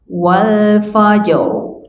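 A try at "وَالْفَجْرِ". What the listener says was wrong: Wal fa, fa-nya tipis. Wal fa. Wal fajr.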